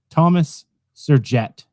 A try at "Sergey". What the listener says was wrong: No, not it. Can't be a jet. It can't be jet, but it's Sergey.